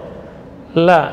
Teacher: La tipis ujung lidah. Jadi makhrajnya lam salah satu dari ujung tepi lidah.